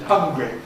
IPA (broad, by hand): ˈhʌŋgri